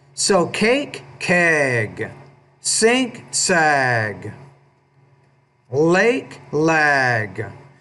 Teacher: when the G's at the end of the word, typically the vowel before it, will be a little bit longer